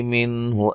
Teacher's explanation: یہاں نون ساکن کا اظہار ہے، غنہ نہیں کریں گے۔